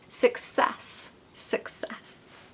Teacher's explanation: You need to put the stress on the second syllable because that helps it sound really, really good, right?